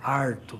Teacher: o famoso R retroflexo, que é típico da área caipira. É o é arto, não é?